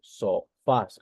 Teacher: la mayor fuerza de voz se encuentra en fas es la última sílaba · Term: palabra aguda